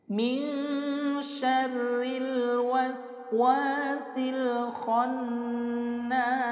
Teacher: bertemu dengan salah satu huruf qamariyah yaitu kha, maka lamnya harus terbaca jelas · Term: alif lam qamariyah